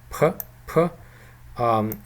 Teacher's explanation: we also have a Cyrillic letter in Mongolian for the sound P, and this is an aspirated P. As you can see from the IPA representation, there is a H in a superscript, which tells us that this is an aspirated consonant, P.